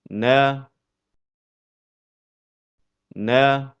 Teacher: Huruf nun keluar dari pertemuan antara ujung lidah dengan gusi bagian atas.